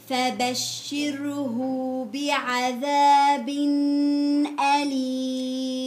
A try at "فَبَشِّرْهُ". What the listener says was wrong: فبشره عطيتي مد وما في مد مزبوط.